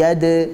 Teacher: pada kata yadkhuluna, huruf dal sukun. Dibaca sebagai qalqalah sughra, bukan yadkhuluna, tapi yad.